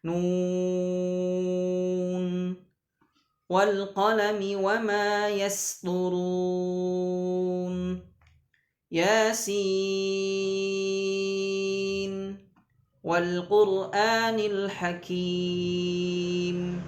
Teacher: tetap harus dibaca jelas, dibaca idharnya idhar mutlak, dibaca jelas, tidak boleh dimasukkan